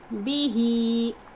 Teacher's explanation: हा खड़ी ज़ेर ही को खींचेंगे हम, बा को नहीं खींचेंगे